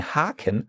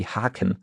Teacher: a long A, a longer A, because you say Haken, which is just a single K.